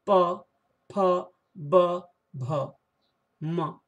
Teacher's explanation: इन वर्णों को बोलने के लिए हमें ओष्ठ का सहारा लेना पड़ता है, इसलिए इसका उच्चारण स्थान है ओष्ठ।